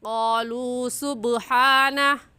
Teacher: قالوا کو ہم نے کیوں کھینچا؟ کیونکہ واو ساکن سے پہلے پیش آ گیا ہے تو یہ واو مدہ کہلائے گا، اور واو مدہ کو ایک الف کی مقدار کھینچ کر پڑھتے ہیں